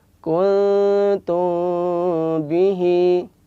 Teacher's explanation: Nah, dibaca ikhfa itu maka disamarkan, mimnya disamarkan. Ketika mengucapkan mim ketemu dengan ba itu disamarkan. · Jadi di sini ada ikhfa samar. Ya, samar itu tidak izhar dan juga tidak idgham. Kuntum bihi. Dan tetap ada gunnahnya. Gunnahnya 2 harokat. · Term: ikhfa syafawi